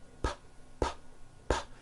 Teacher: No, your vocal cords are not producing a sound.